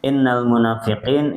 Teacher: Innya ditahan tiga harakat dengung. Munafiqin ya nanya dua harakat juga qinnya sama.